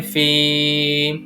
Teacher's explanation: اس میں ہم فی کو کھینچ کر ادا کریں گے کیونکہ اس میں یا ساکن سے پہلے زیر ہے تو یا مدہ استعمال ہو رہا ہے اس وجہ سے۔